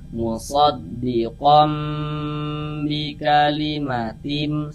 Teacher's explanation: Nah, kita panjangkan dari kom itu kita tahan ya. Kita panjangkan sebentar sepanjang dua harakat kita gunahkan atau kita dengungkan.